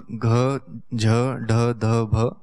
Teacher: चतुर्थ अर्थात घ झ ढ ध भ, इन 5 वर्णों का हकार के समान महाप्राण प्रयत्न होता है।